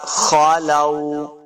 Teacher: لام کے اوپر جو کھڑی زبر ہے، اس کو دو حرکات لمبا کریں گے.